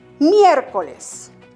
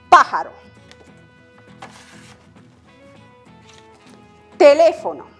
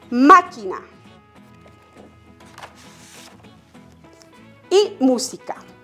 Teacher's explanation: La única regla que debemos respetar es que la mayor fuerza de voz recaiga en la tercera sílaba, en la antepenúltima sílaba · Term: esdrújulas